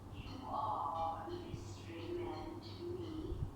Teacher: Linguists give vowels names to make it easier to talk about. The vowel in the word man is called the trap vowel. In the early to mid 20th century, it sounded closer to an air type vowel.